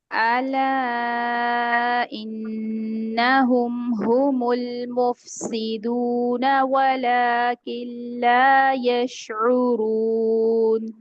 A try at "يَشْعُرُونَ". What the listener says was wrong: شین پھر سے ہل گیا آپ کا ہلا تھا پہلے بھی. یشعرون شین نہیں ہلانا ہے.